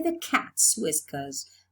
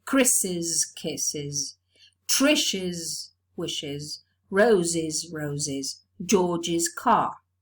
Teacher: if the original word ends with a sibilant the genitive is realized as an extra syllable